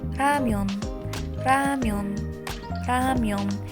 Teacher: خیلی نرم تلفظ میشه یعنی وقتی میخوای ر رو تلفظ کنی زبون خیلی سریع با کام برخورد میکنه و نرم تلفظ میشه